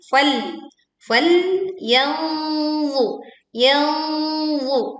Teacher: Kita menyamarkan bunyi nun sukunnya karena kita sudah membentuk mahraj huruf dha saat nun dibacakan.